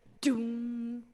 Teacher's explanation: doom, which has a lot of force and aspiration behind it, doom. It's more of a pulling the tongue away from the roof of the mouth so that it is an effect that doesn't overshadow what's going on with the melody or harmony in the sopranos.